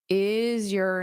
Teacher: this your can become more of an unstressed your. · you can use this R to connect to the vowel sound